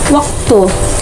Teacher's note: Semivokal fonem W merupakan semivokal bilabial yang dilafalkan dengan mendekatkan kedua bibir tanpa menghalangi udara yang dihembuskan dari paru-paru